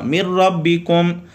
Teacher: مر ربی پہ یہاں پہ ادغام یرملون بلا غنہ ہے، مر ربکم اور غنہ نہیں ہوگا